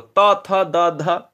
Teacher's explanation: एकदम से जीभ आपकी टक से लगती है दांत में